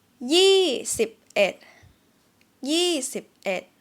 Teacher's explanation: So in Thai, we don't link it, meaning that the final consonant of the first word or syllable is not going to be dragged or linked to the initial consonant of the second syllable